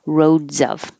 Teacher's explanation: I changed the S to a Z to remind you to make the connection with the Z